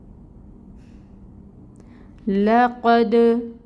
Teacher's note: دال حروف قلقلہ میں سے ہے، ساکن ہے، قلقلہ ہوگا۔